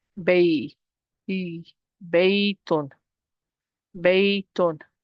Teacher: For me to say B, that's stretching. But because this ya is preceded by a fatha, this becomes a harf lin. It's no longer stretching. So I'm going to pronounce the short vowel of the ya.